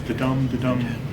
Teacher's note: it's an unstressed syllable followed by a stress syllable five in a row per line